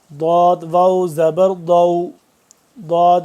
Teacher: जबान की करवट को ऊपर वाली दानों के साथ लगाएंगे तो दद अदा होगा